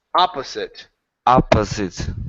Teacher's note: So the first O is an ah. The second one is the schwa.